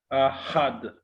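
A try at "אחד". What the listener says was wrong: Attention à la voyelle. Echad. Echad.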